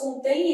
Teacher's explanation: Então, vai ser um ditongo fonético decrescente